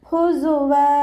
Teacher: സായ് ഉച്ചരിക്കുമ്പോൾ അസ് ആ ഒരു സൗണ്ട് തന്നെ കൊടുക്കുക കേട്ടോ. തേനീച്ചയുടെ മൂളൽ പോലെയുള്ള സൗണ്ട് കൊടുത്തിട്ട് ഉച്ചരിക്കുക.